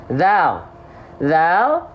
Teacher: yang ini itu dilafalkan sama seperti sa, yaitu bukan digigit, tapi apa? Ujung lidah kita disentuhkan tipis-tipis ke ujung gigi seri atas.